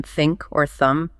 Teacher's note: There's the voiceless one, like in think or thumb, just air passes through. Tongue between the teeth, no voice.